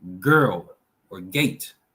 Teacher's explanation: Is a plosive, vibrating, guttural throat sound. So use your throat to make that G sound, the hard G sound.